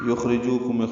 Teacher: یخرجوکم خا ساکن پہ ہمس را باریک، جو واو مدہ، دو حرکات لمبا کریں گے.